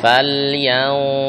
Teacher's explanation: Fal yang duril. Ya, jadi tebalkan lagi suara gunahnya, gunah pada ikhfa nun mati ketemu dha. Falyau yau gunahnya tebal.